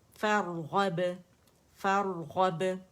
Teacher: یہاں را کے لیے آپ کی جو زبان کی جڑ ہے وہ اٹھی ہوئی ہے، ٹھیک ہے، تو آپ لوگوں کے لیے غین ادا کرنا آسان ہو جائے گا کیونکہ وہ بھی موٹا ہے اور ادن الحلق سے ادا ہوتا ہے، زبان کی جڑ اوپر نرم تالو سے لگتی ہے.